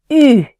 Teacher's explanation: The unaccented U and the U with the accent circonflexe are pronounced with the lips tightly pursed